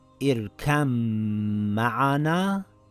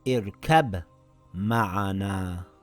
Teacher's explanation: Merging also happens to the ba and the mim. The ba gets dropped and is read as اركم معنا and not اركب معنا. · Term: idgham